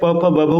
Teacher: जैसे आप प फ ब भ उच्चारित करेंगे आपके दोनों होठ आपस में टच होंगे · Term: ओष्ठ